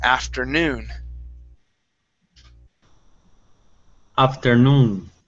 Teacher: this word, the stress is at the end of the word. Instead of afternoon, it's afternoon.